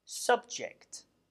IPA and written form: ˈsʌbdʒɪkt (subject)